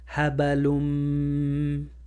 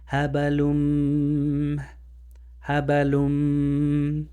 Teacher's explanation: And don't forget the nasalization, the vibration from the nose. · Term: idgham